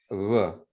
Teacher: you have an approximate B where the lips don't completely touch